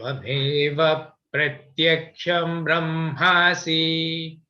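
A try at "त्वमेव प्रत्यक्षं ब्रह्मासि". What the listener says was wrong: The pratyaksham also goes down. Tvameva pratyaksham brahmasi. Like that.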